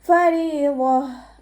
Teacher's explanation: താ മർബൂത്തയിൽ നമ്മൾ വഖഫ് ചെയ്യുമ്പോൾ ഹാ സുക്കൂനിൻ്റെ സൗണ്ട് കൊടുത്തിട്ടാണ് വഖഫ് ചെയ്യേണ്ടത്